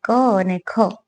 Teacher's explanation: જોજો આપણી જીભ છે ને એ તાળવાને ટચ થાય છે. અને કંઠ, ગળામાંથી જેનો સ્વર નીકળે ક અને ખ, તો આ કંઠ્ય ધ્વનિ છે